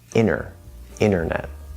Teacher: We drop that first T